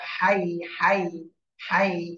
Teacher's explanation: জিহ্বার মধ্যখান উপরে তালুর সাথে লাগবে, কিন্তু ঠোঁটটা গোল হবে না, তো ঠোঁটটা ছড়ানোই থাকবে। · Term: ইয়া